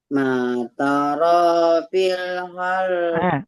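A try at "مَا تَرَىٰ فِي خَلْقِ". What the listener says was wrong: Matarafi khalqir. Jangan fil. Matarafi khal. Untuk ayatnya alhamdulillah sudah dihafal, cuman catatannya adalah iramanya sedikit lagi.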